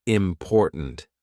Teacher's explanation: My tongue is there. It's ready to do the T, but it doesn't release. We just go important.